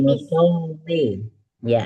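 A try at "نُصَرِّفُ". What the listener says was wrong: Ya, jadi roknya jangan ikut tebal, karena dia kasroh.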